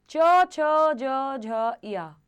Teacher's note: इनका उच्चारण स्थान है तालु या तालव्य